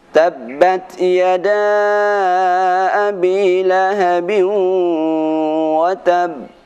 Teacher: ketika kita berhenti pada huruf qalqalah yang disertai dengan tasydid, maka cara membacanya qalqalah disertai jeda